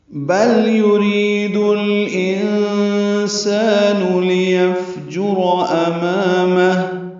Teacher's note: انسان میں نون ساکن کے بعد سین آنے کی وجہ سے اخفا ہے، سالف مدہ ہے، 2 حرکات لمبا ہے، نون کی پیش معروف طریقے سے جلدی پڑھیں گے۔